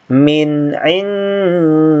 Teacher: Ini karena berbaris bawah dia dibaca tipis.